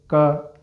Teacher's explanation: क बोलने में हमारी जीवा ने किसको स्पर्श किया? कंठ को।